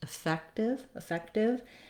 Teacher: Then when we go to effective, again, we have letter E, so we're going to have our I as our reduced vowel. Same syllable stress with the second syllable fec stressed, effective, effective.